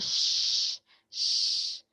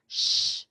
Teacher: the body of your tongue is touching the pallate above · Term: palal